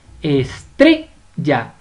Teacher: estrella tiene la mayor fuerza de voz en tre. Estrella. Es decir, estrella es una palabra grave sin tilde.